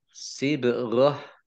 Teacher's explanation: bak sukun, bacaan qalqalah, dibaca memantul, ditampakkan pantulannya